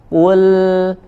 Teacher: huruf lam sukun tidak dipantulkan suaranya Ul ya jangan dipantulkan memantul suaranya Kule ya jangan dilepas dulu